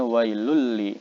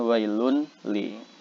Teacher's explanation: Maka cara bacanya adalah dhammah tanwin ini dimasukkan ke huruf lam. Jadi bacanya wailul li, bukan wailun li. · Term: idgham bilagunnah, idgham bila gunnah